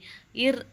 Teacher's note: ர் அப்படின்னா முன்ன ஆடொளி